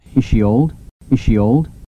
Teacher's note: Z와 she 발음 이것이 중복이 되는데 앞에 게 이럴 경우에는 탈락이 됩니다. 그래서 종성이 탈락하는 거죠.